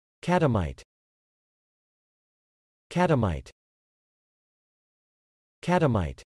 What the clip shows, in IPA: ˈkæt əˌmaɪt